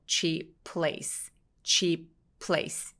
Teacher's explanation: 자, 첫 번째 단어에 cheap해서 P 쪽에서 우리가 cheap 이런 식으로 P 소리를 내진 않지만 입술은 이미 P 발음을 할 준비를 하고 있죠